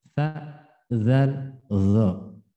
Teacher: Yaitu maju dikit. Ujung lidah pada pertemuan ujung gigi seri atas dengan bawah.